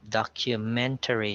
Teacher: so the stress is on the third syllable